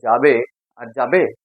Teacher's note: একটা জিজ্ঞাসা চিহ্ন দিয়ে সুরটা পাল্টে যাচ্ছে